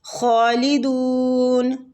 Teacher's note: خوا مستعلیہ حروف ہے، پور پڑھیں گے